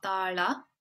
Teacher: The L is kind of like this dark L sound in the back of your mouth.